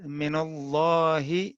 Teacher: من جو حرف جر ہے، اس کے بعد جب کوئی حرف ساکن آئے گا تو نون مفتوح پڑھا جائے گا